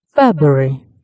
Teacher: In Pratt, we can see three clear syllables peak, which shows that all syllables are pronounced. The first syllable, Feb, has the highest intensity and pitch, which shows the main stress. We can also see the R sound after the B as a short transition between syllable, which help the word sound natural.